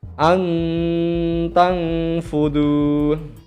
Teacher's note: Nah, berbeda lagi dengan ikhfa, ya, dibaca samar, antang fudu. Nah, ada nun mati bertemu dengan ta, dibaca samar